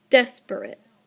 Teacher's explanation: that pattern is a stress syllable and then two unstressed syllables like the word desperate